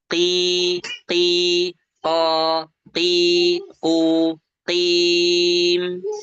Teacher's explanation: harus kita tunaikan dari lisan yang pangkal, qi ya, lisan pangkal atau pangkal lidah yang bertemu dengan langit-langit yang lunak. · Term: huruf qaf